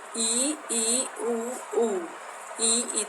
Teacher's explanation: जैसे ई उ ई तो जीभ बहुत ऊपर उठ जाती है और जो रास्ता है वो बिल्कुल संकरा हो जाता है। · ई का उ का उच्चारण करके देखो तो जीभ हमारी बहुत ऊपर उठ जाती है ना, तो उसको संवर्त स्वर कहते हैं। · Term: संवृत स्वर